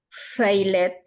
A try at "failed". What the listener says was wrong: Failed. No suena la E. No suena la E ahí.